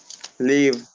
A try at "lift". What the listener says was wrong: Live. lift. Esta es lift. Con una T al final. Vale, lo que le pasó es bien común, sobre todo con esta palabra. Esta palabra tiene una peculiaridad y es que tiene dos pronunciaciones.